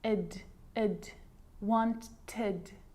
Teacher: So you can hear the ed sound there. Id, wanted. It's its own syllable.